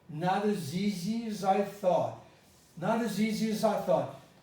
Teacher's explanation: i transformed the eye into an ah as easy as i thought and i didn't finish the t · When I said not as easy as I thought, I transformed the I into an A.